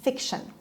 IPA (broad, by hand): ˈfɪkʃən